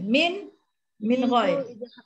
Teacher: Nun mati bertemu dengan ghain, bacanya tak dengung. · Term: izhar halqi